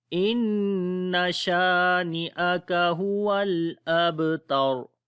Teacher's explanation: ता को बारीक पढ़ेंगे और रा को मोटा पढ़ेंगे जब रुकेंगे